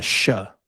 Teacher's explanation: In Uruguay, they pronounce it a sha. It's a sh sound.